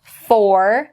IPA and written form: fɔːr (for)